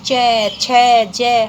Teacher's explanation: हमारी जो जीव है मुख विवर में कंठ से ऊपर उठ कर के तालू के पास टच होती है · चय की जो पंक्ति होती है, यहाँ पर अब हम ये जो 2 अक्षर हैं य और श, इन दोनों को एक साथ उठाएंगे और दूसरी पंक्ति में लिख दें, तो इन सभी का उच्चारण स्थान चय, छय, जय, हमारी जो जीभ है मुख विवर में कंठ से ऊपर उठ करके तालु के पास टच होती है, इस कारण से यह पंक्ति तालव्य कहलाती है।